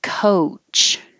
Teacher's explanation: it's not just a pure o but oh it starts lower and then moves up to ooh but i would actually use a schwa because you're starting more